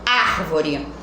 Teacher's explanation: não é acentuada ela deixa de ser proparoxítona é acumulado árvore A árvore é uma palavra proparoxítona porque a sílaba tônica é a antepenúltima e ela é acentuada tá então vocês irão marcar sequência por